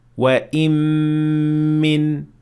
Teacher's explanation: the noon is completely gone and the only thing that remains behind is its ghunnah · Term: idgham